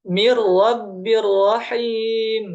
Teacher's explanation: langsung tanpa ada sisa ya dengung pada huruf nun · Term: tanpa Gun